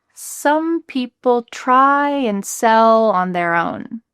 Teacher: We're emphasizing try, sell, own.